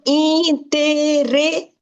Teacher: The stress is on the before last syllable.